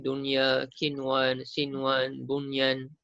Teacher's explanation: Yang ini semuanya dibaca dengan jelas dan terang, tidak dengung. Dan tidak ada idgham. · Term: izhar mutlak